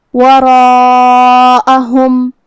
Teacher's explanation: مد الف اپنے پیچھے والے حرف کا حکم لیتا ہے تفخیم میں اور ترقیق میں، تو اس سے پہلے حرف را کا حکم ہے تفخیم، تو ہمیں را کو اور مد الف کو دونوں کو بھاری آواز میں پڑھنا ہے۔ وراءہم، یہ مد واجب متصل ہے، لہذا ہم اپنی آواز 4 مد کے برابر لمبی کریں گے